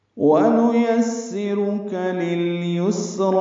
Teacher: نون یا جلدی پڑھیں گے، یا کو سین سے ملانا ہے، صفیر کی آواز سے سین ادا ہوگا